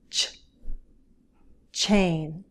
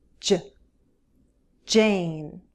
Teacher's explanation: There's a small group of consonant sounds that I named the chain group, traditionally known as Affricates. They're a stop followed by some friction.